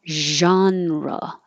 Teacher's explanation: it sounds more like a z like zon that means your tongue is too tense and you need to relax it